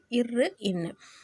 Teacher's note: நாவின் நுனி மேல்வாயை தடவுவதால் வரக்கூடிய எழுத்து